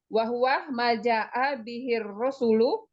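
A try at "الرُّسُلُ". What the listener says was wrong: Ra. Jangan ra. Ru.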